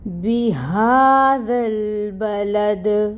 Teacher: با کے اوپر فتحہ کی حرکت ہے، 1 کاؤنٹ، لام کے اوپر فتحہ کی حرکت ہے، 1 کاؤنٹ، دال کو ساکن کریں گے، وقف آ رہا ہے، جب ساکن کریں گے تو پھر دال کے اوپر قلقلہ ہوگا، دال کو ہلائیں گے